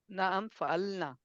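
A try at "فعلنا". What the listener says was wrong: फ़अलना, फ़अलना, अलिफ है ना थोड़ा,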